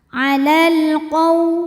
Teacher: Maka lam sukun dibunyikan dengan jelas atau biasa disebut dengan idhar qamari. Alal qaw. Qaw ada harfulin sebab ada waw sukun didahului baris fathah, maka dibacanya lembut.